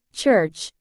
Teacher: is the sound in the word church to produce this sound the speaker starts by making a complete closure with the tongue against the roof of the mouth blocking the · type of consonant sound that combines a stop and a frickative it is produced by briefly stopping the air flow followed by a slow release with frication this means that the sound starts with a complete closure of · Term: affricate